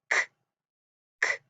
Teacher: k is an unvoiced sound, so it doesn't make our vocal cords vibrate a lot, so we can't feel it. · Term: k sound